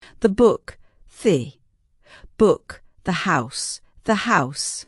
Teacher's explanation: The word the also has schwa when it goes before a consonant. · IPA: /ə/